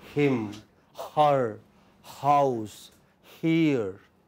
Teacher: This sound comes from pharynx, here, right from the back of the throat